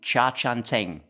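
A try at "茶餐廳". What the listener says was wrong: You're not far off. Cha Chaan Teng. It's like an intonational difference. many Chinese dialects, Cantonese is a tonal language, which means each sound can be pronounced 8 different ways and therefore has a different meaning depending on how you pronounce it.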